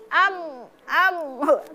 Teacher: Jadi am jadi terasa di hidung ya di alhoisyum atau rongga hidung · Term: dengung